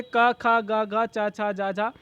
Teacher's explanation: इस प्रकार बोलते हैं कि हवा उच्चारण स्थानों को स्पर्श मात्र करती है, ये स्पर्श व्यंजन कहलाते हैं।